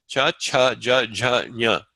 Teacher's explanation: You have your palatals. This is with the tongue going against the soft palate.